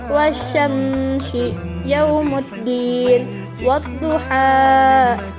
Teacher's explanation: dibacanya lebur atau idgham, bunyi al tidak dibaca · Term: al-syamsiyah